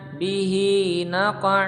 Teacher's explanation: bihi, hi panjang 2 ketukan karena mat silah qasirah